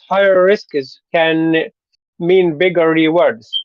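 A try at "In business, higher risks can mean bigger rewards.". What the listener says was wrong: That a lot of times the adjectives will be in a high tone, and then the next word will be in a low tone. So higher risks, higher risks.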